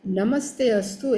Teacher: actually it is namaha plus te, but visarga convert into half sa. That's why it is namaste.